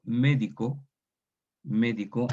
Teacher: ahí la tónica es la E